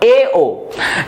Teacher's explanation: जबकि अर्ध संवृत स्वर, जब मुंह को आधा बंद किया जाता है तो इसे कहा जाता है, जब मुख के द्वार को आधा बंद किया जाता है इससे उच्चारित स्वरों कहा जाता है अर्ध संवृत स्वर